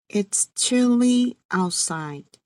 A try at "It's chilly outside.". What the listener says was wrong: Great job.